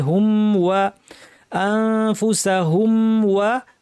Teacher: মিম ওয়াও দুইটাই স্পষ্ট হবে, মিমে কলকলা হবে না